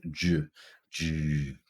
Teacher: So you can think of an affricate as a combination of a stop and fricative. It begins as a stop and then immediately releases into a fricative.